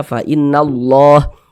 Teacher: Huruf lam jalalah, huruf lam yang terdapat pada lafaz Allah yang di tengah nih, lam jalalah, itu dibaca tebal, dibaca tabkhim sehingga dibaca fa innallah.